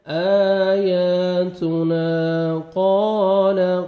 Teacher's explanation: الف مد ہے، 1 سیکنڈ نون کو کھینچنا ہے، آیاتنا قال، قاف کو موٹا کر کے پڑھیں گے، اور الف مد ہے، 1 سیکنڈ قاف کو کھینچنا بھی ہے